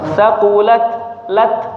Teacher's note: huruf ta ada sedikit hams ya